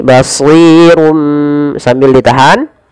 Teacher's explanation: Dibaca dengan idbaq yang merapatkan bibir kita.